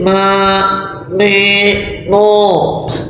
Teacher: Karena ma itu makhrajnya khaishum, gunnah dia.